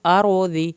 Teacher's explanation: الارض، لام نہیں ہلے گا، را کو پر کریں گے، ارض، ضاد کی زیر کو لمبا نہیں کھینچنا